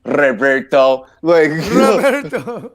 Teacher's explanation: it's pronounced with a rolling R